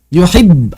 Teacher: Ada dorongan sebentar. Yuhibb langsung berhenti.